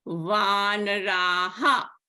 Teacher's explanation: Here the vowel before the Visarga is long a. So the pronunciation of the Visarga will be a ha sound in the end.